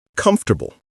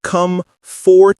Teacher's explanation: The or in fort gets swallowed.